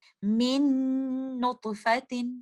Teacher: Next example میں دیکھتے ہیں من نطفۃ۔ یہاں پر ساکن لیٹر نون کمپلیٹلی طور پر مرج ہو گیا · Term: ادغام